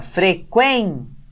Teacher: Então, a gente sempre vê assim, frequência. Então, a gente está vendo aí que a sílaba quen, que é a penúltima dessa palavra, é a tônica